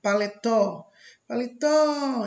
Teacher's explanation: a sílaba tó, na última posição, ela é uma oxítona